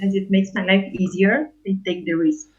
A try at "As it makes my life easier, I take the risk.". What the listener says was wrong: And your intonation goes it goes up. As it makes my life easier, I take the risk. It's not necessarily wrong, but it's part of that accent that you have. As it makes my life easier, I take the risk.